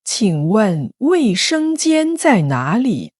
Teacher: 注意哪里的哪字是第3声，要先低再高。